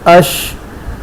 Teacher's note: اس کی آواز پورے منہ میں پھیل کر نکلتی، اش. تو یہ تفشی یہ شین میں پائی جاتی ہے.